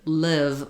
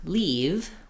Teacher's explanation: Our E vowel that we were looking at, the tongue fills up all of the mouth. The I vowel, the tongue is a little lower and more relaxed.